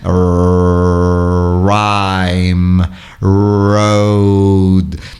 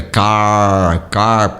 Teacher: o item sempre requer que se enrole a língua para trás na boca